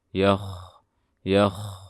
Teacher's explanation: Kho karena bersifat rokhawah, suaranya ditahan terlebih dahulu. Dan pastikan suara tafkhimnya jelas. Yakh. Jangan yakh, tapi yakh tebal. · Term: kho sukun